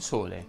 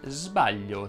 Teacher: l'unica differenza e nell'intervento o meno delle corde vocali